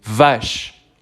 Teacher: es una V con vibración · Me acerco al micrófono para que escuchen esa vibración de la V.